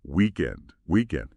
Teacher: because it's a yes no question, the pitch goes up a little bit on the last word. Weekend. Try just that rising tone.